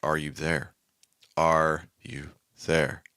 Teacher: the third one is not as high in Pitch as the first one but it is higher in Pitch than the second one